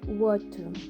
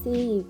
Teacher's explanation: Received Pronunciation is a non-rhotic accent, which means the phoneme r is often not pronounced when a non-thing a non- vowel comes after it.